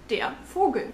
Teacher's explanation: The V sound in German is actually pronounced as F.